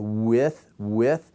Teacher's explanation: I go right from W into my vowel. Those are glides.